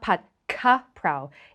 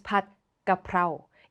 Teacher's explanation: the real letter Gao Gai is somewhere in between a G and a K. It is not Pad Ga Prao.